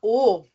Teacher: a gente vai fazer o formato da boca do o tá ã mas o som que a gente vai emitir é o som do e